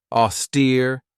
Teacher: This has 2 syllables, and the stress is on that second syllable with that long E sound.